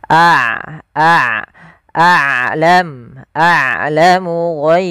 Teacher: mana dia harus dialirkan suaranya sedangkan syiddah adalah suaranya tertahan nah Ain tidak terlalu ditahan dan tidak terlalu dialirkan maka tengah-tengah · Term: sifat bainiah